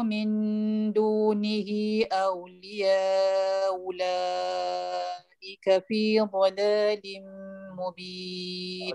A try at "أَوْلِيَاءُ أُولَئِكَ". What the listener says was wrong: Okey, Ustaz dengar hamzah yang kedua hilang terus. Timbulkan dia, timbulkan hamzah kedua. Ulaika. Clearkan dia.